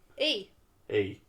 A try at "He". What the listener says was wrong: There's an H in that word. There's only 2 fucking letters. You should pronounce both of them. Yeah, but it's 2 fucking letters. He.